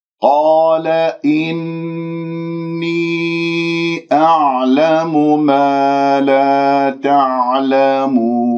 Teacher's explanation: إني نون مشدد الغنة أكمل ما تكون، ولدينا حرف المد في إني الياء وبعدها الهمزة في كلمة أعلم، إذن كلمتين مد جائز منفصل، حركتين من الطيبة أربعة خمسة من الشاطبية.